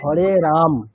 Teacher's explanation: রামের পর ম এর পরে যেটা অ আছে সেটাও বলছি না আমরা ম স্টপ করছি